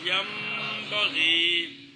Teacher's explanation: نون ساکن اور نون تنوین کے بعد با آ جائے تو نون ساکن اور نون تنوین کو میم سے بدلانا ہے، پھر اس کو اخفا کر کے پڑھنا ہے